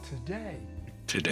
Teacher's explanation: Take the word today, which is day plus a prefix. Any dictionary will tell you that the prefix contains schwa